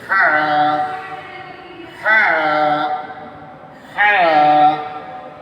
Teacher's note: হা উচ্চারণ হবে কণ্ঠনালীর মাঝখান থেকে, এই জায়গা থেকে। · গলার মধ্যে শো শো আওয়াজ হবে, সেই আওয়াজের সাথে কণ্ঠনালীর মাঝখান থেকে এই হাটা উচ্চারণ করতে হবে।